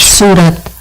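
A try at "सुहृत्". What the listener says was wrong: Surit. It sounds like you said Sura. It's Surit.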